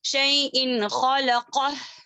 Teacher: उसके बाद हुर्फ हलकी में से एक हुर्फ आ रहा है तो वहां पर हम गुन्ना नहीं करेंगे, जाहिर करते हुए पढ़ेंगे